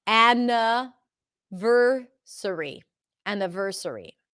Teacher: the schwa is between the N and the V.